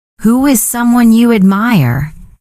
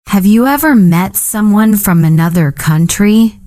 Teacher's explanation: tone rising for yes-no questions, falling for WH questions